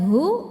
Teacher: keluarnya dari tenggorokan bagian bawah suaranya lebih berat ya tapi tidak juga masuk ke dada